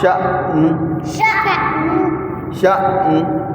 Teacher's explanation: आवाज़ को थोड़ा सा झटका देकर पढ़ते हैं।